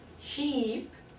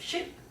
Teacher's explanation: in English there are two types of e sounds uh there is the long sound of sheep and the short sound of ship